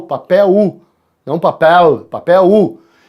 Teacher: o L tem som de U no final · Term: ditongo decrescente